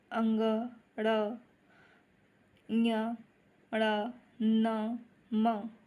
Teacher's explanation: इन सारे वर्णों का उच्चारण हम नाक से करते हैं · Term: नासिका